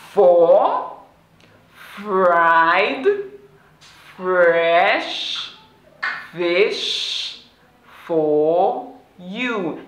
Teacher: let your upper teeth touch your lower lip, then gradually release air. It's a voiceless sound, so you don't have to use your voice when you're saying the sound.